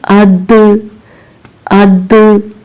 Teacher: दाल के मखरज से आवाज टकराकर वापस आ रही है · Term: कलकला